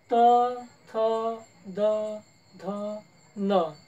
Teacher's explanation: जिभेचा शेंडा सरळ आणि मुखात आपल्या समोरील दातांना स्पर्श करतो